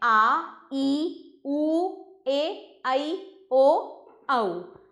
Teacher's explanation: वे स्वर जिनके उच्चारण में ह्रस्व स्वर से दुगना समय लगता है। ज़्यादा नहीं लगता, लेकिन ह्रस्व से ज़्यादा लगता है, वे दीर्घ स्वर कहलाते हैं।